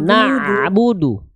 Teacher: Enggak ada vokal a lagi setelah ain.